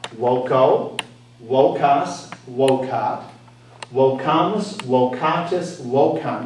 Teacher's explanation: Notice I'm pronouncing the V as a W. That's how we pronounce it in classical Latin.